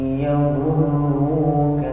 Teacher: Dnya jangan dari ujung lidah, tapi dari tepi lidah bagian samping boleh kiri boleh kanan. Ini suaranya di samping. · Yadurruka juga dari samping. Enggak boleh pakai ujung lidah.